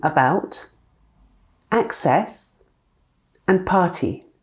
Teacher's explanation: They all contain the letter A, but the sound is totally different. We have the unstressed schwa in about, short A in access, and long A in party.